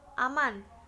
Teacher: bunyi N yang biasanya dalam bahasa Indonesia diucapkan secara apiko-alveolar seperti pada kata aman